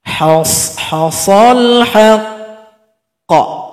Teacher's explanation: kalau seandainya huruf qalqalah yang bertasydid maka tunggu 2 detik baru dipantulkan.